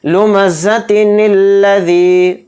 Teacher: نون کو لام میں ملا دیں گے، نون لام زیر نل